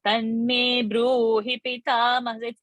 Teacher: We are holding Bru, making it Dirgha.